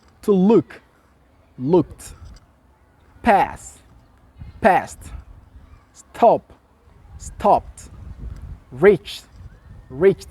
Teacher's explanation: que F k P S TH et ch dans ce cas-là le ed devient muet et le D se prononce t